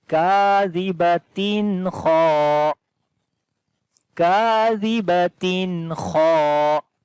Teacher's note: And again here is after the tanween, the next letter is kha, which is the throttle letter. We make izhar here like the clear sound of noon.